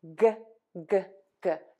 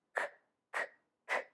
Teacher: We have g, g, g. Your voice box is on and moving. For the K, your voice box is off. K, k, k. So this sound will be a little harsher.